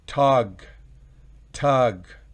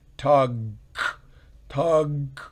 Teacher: Recuerden, la G es gutural, es oclusiva, perdón, la G es oclusiva.